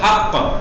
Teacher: अब हक़्क़ा मत कर देना, कभी पूरी हरकत बना दो, हक़्क़ा कर दो कभी, बिलहक़्क़ा हरकत ना बननी चाहिए, हक़ मुख्तसर सी मामूली सी हरकत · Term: कलकला